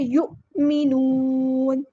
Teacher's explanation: یا کی جو پیش ہے اس کو اچھے سے ہونٹوں کو راؤنڈ کر کے ادا کرنا ہے ، یو نہیں کرنا، یو، حمزہ پہ جھٹکا دینا ہے، یؤمنون۔